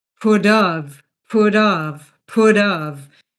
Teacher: So it sounds like put pudd and the t becomes a flat t. So it's along the lines of put of put of put of.